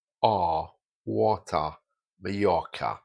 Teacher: So generally, in received pronunciation, the R's dropped off.